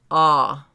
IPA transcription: ɑ